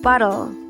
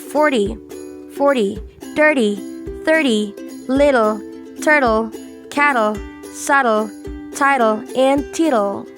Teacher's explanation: T is D when the T is in between a vowel sound and L or R. Bottle, for example. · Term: soft D